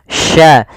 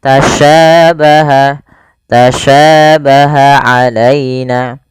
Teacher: Karena di sini adalah huruf sya, maka biasanya kalau kita kenal dengan sya. Sya ini bagaimana cara pelafalannya dari tengah lidah kita, karena makhrajnya dari tengah lidah sya. Dan sya memiliki sifat namanya tafashi.